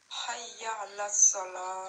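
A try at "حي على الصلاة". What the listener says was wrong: Très bien.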